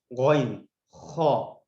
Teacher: آپ دیکھ رہے ہیں یہاں پر ڈیوائڈ کیا ہوا ہے غین خا, یہ سب سے ٹاپ پہ لکھا ہوا ہے. یعنی جہاں پر ہمارا حلق کا اسپیس شروع ہوتا ہے یہیں پر غین خا ادا ہو رہے ہیں